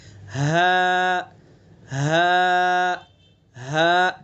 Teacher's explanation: اقصائے حلق یعنی حلق کا آخری سینے کی طرف والا حصہ، سینے کی طرف سے، حلق کے سینے کی طرف سے اس کو ادا کریں گے.